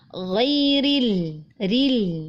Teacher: Nah, itu lebih mudah karena huruf ra-nya tipis karena berharokat kasroh, lalu kemudian di depannya huruf lam masih dibaca tipis juga.